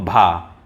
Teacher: जो भा है वह घोष भी है, महाप्राण भी है, ओष्ठ व्यंजन भी है।